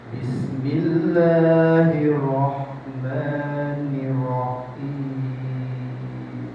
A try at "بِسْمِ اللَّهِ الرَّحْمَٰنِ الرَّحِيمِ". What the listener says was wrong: Nirra bismillahir nir itu tasdidnya, tekannya suka dikit lagi. Bismillah.